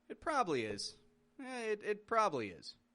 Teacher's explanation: dropping that vowel from the middle sounds more confident